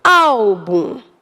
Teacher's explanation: a palavra álbum tem a sua sílaba tônica na penúltima e termina em um então aqui na penúltima eu mando o